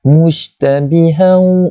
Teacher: Petikkan shin tu dalam mulut kita. Tu adalah sifat tafasir.